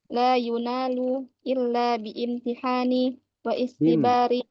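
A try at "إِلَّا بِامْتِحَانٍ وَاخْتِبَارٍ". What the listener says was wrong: Disambung bimtihani. Ini apa untuk hamzah wasol dan hamzah qot'i. Perhatikan cara bacanya ya. Jadi kalau hamzah wasol disambung aja. Illa bimtihanin wa ikhtibarin gitu ya.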